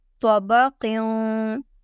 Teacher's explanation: Qaf double zer qim. Qaf is thick and we will do ikhfa here because of tanween.